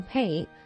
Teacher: A target such as play is much more likely to be reduced to pay than to the alternative lay. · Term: consonant cluster reduction